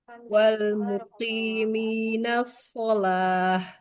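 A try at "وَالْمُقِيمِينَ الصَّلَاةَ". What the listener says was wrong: Lebih tebalkan Ibu huruf shadnya. As-sholah wal muqimina sholah. As-sholah.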